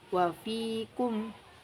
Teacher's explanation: Fa keluar dari bibir bagian dalam bertemu dengan ujung gigi atas